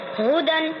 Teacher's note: پیش کو جلدی پڑھے تھوڑا بھی نہ کھینچے، معروف پڑھے مجھول آواز سے بچے۔ دال کے اوپر دو زبر کی تنوین ہے، دو زبر کی تنوین اور نون ساکن کی آواز یکساں ہوتی ہے۔